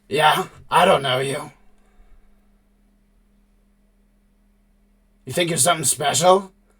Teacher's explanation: when she speaks, it is with a deep, gnashing, guttural sound that is entirely not fitting her demeanor